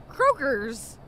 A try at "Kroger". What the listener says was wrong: Kroger. There's no S at the end of Kroger.